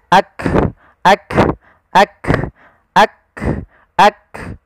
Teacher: Sehingga ketika melafalkan huruf kaf, yang perlu kita bunyikan dulu yang syiddahnya, yaitu kita tahan suaranya, baru kita alirkan nafasnya.